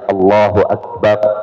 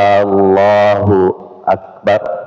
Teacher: memanjangkan sebutan alif pada lafzul jalalah ya. Yang awalnya asalnya Allahu Akbar ya menjadi Allahu Akbar.